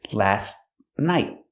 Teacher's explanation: The T in last is a stop T, but you don't really hear it because it's between consonants.